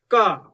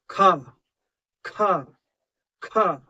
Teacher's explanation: महाप्राण में उच्चारण करोगे तो मुख से वायु ज्यादा निकलेगी।